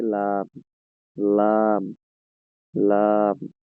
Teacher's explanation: জিহ্বার আগার কিনারা সামনের উপরের মাড়ির দাতের গোড়ার সঙ্গে লাগিয়ে